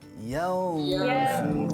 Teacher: Make sure mulut kita bulat, dalam keadaan bulat sebab dia dibaca secara tafkhim